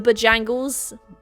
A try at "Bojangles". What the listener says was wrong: Bojangles. Bojangles. You don't go fast through it. You say Bojangles. No, it's not. It's Bojangles.